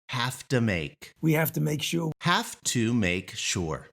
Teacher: This have to starts to sound like HAFTA. It's not quite there, but it's on its way.